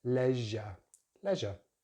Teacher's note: So we're using the short vowel sound in that first syllable. Second syllable is just the schwa, we don't really pronounce the letter R here